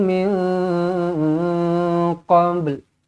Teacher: Nun kosong bertemu qaf, ikhfa hakiki, dengungkan 2 harakat.